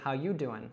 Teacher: you could drop the G there and say, how you doing?